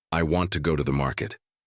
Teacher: in the sentence, I want to go to the market, the stress naturally falls on want and market.